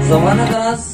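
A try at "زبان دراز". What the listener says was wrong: जमाना नहीं, जबान दराज,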